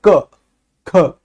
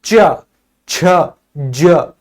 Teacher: जब हम क ख ग को बोलते हैं ना तो एक झटके से इसका उच्चारण होता है। लेकिन जब च को बोलते हैं तो हल्का सा लंबा उच्चारण होता है।